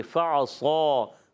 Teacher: اوپر کے دانتوں کے کنارے جب نچلے والے ہونٹ سے لگتے ہیں تو ادا ہوتا ہے فا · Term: فا کا مخرج